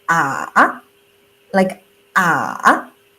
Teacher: Okay, third tone you can see the third tone is like goes down a little bit, then we're going like goes up